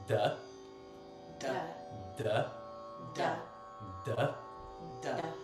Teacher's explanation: it's a dental D, so your tongue is kind of coming forward in your mouth, and the tip of your tongue will probably stick out of your teeth a little bit. So it's a softer D.